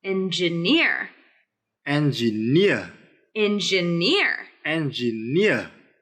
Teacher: we need the stress of the word engineer to be on the third syllable